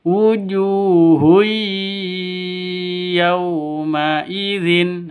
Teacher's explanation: masuk ke ya pakai dengung atau masuk ke ya disertai dengung dua ketukan idgham bhunah hurufnya idgam bunah ya Nun mim ww wujuhu yaumidin · Yaw sifat lin, lentur, lemes, tidak boleh disentak, tidak boleh dipanjangkan. Yauma itu salah, atau yauma idzin itu salah. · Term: idgham bighhunnah, Idgham bi gunnah